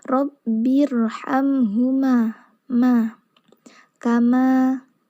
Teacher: jadi keluarnya itu bersama-sama dari bibir atas sampai bibir bawah itu sama-sama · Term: mim